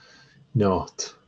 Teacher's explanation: kind of pre-aspiration in the T